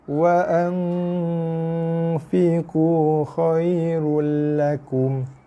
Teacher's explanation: Bunyi dengung di rongga hidung kita, di hidung, minimal 2 ke 3 harakat.